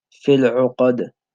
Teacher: The dal also has a qalqala, which gives it that bouncing effect.